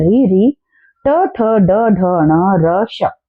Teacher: ये सारे के सारे मूर्धन्य वर्ण होते हैं, मूर्धा से बोले जाते हैं।